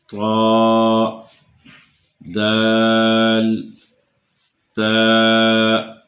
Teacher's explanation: زبان کی نوک اوپر کے دانتوں کی جڑوں کے ساتھ مس ہوگی، لگے گی تو یہ حروف ادا ہوں گے۔ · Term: حروف نطعیہ